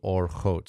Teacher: I know that there's some discrepancy on this, but we read it as a short O vowel, and it's going to be in a closed and unaccented syllable, because a closed and unaccented syllable needs a short vowel. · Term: kametz hatuf